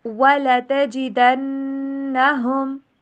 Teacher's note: واؤ کے اوپر ہونٹوں کو گول کیجئے، ڈبلیو والی ساؤنڈ کے اوپر پڑھیے، مکمل جوڑنا نہیں ہے ہونٹوں کو گول کر کے پھر ان کو واپس سلائٹلی اوپن کرنا ہے۔